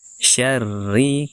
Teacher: syarri kita tipiskan bacaan rnya